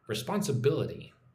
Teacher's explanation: So, the emphasis goes on the fourth syllable there.